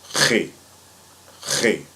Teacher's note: So it's going to be kind of like a what people like to call the hawking sound, but you don't want to spit. So you want to keep, you want to keep all that in your mouth and just let the tones come out.